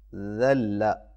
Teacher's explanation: ज़ाल की आवाज़ बारीक और नरम होती है